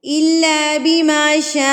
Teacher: شاء چلتی بھی آواز ہوتی ہے، جھٹکا نہیں دینا ہے، اس کو مارنا نہیں ہے لفظوں کو.